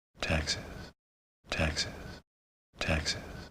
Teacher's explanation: he's almost whispering it at the end